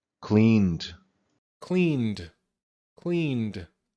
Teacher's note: because of the N, we're going to use a D sound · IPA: /d/